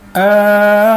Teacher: Jadi al pada al tu 6 harakat. Ya, 6 harakat. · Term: mad lazim kalimi mukhaffaf